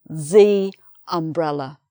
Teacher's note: it's not pronounced: yumbrella, it's pronounced: umbrella